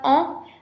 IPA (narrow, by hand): ɑ̃